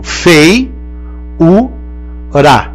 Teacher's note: E esse U que aparece em feiura, baiuca e boiuno não está formando hiato com a vogal anterior, porque em fei a vogal é o E. O I é semivogal.